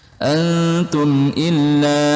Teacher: mim sukun bertemu huruf alif, hukumnya idhar syafawi, jelas di bibir.